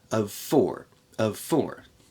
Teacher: here we have the v in of but it's connected to F in four